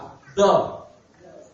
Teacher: ujung lidah ditempelkan pada persambungan antara gusi dan dua gigi seri atas. Pengucapannya tidak tergesa-gesa, suara dilepas dan nafas ditahan.